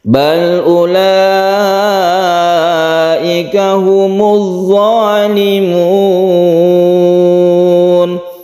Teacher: U-nya ini tidak dibaca panjang, wau-nya ini hanya tanda tulisan saja dan tidak sukun. Jadi langsung ulaika.